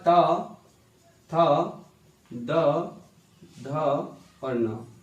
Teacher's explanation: दंत व्यंजन में क्या आता है, दंत से तावर्ग बोला जाता है